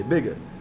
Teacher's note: like we don't usually pronounce our ERS and that's not a sound that's often made in western African places